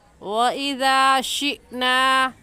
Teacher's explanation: ذال کا مخرج یہ ہے کہ زبان کی نوک کو دونوں دانتوں کے درمیان میں لانے سے ذال نکلتا ہے